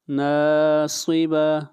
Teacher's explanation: صاد کو موٹا پڑھیں گے، صاد حروف استعلاء میں سے ہے اور آخر میں جو یہ گول تا ہے یہ ہا بن جائے گی سٹاپ کرتے وقت۔